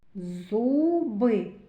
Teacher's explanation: Перший звук з твердий приголосний. Зуби у голосний.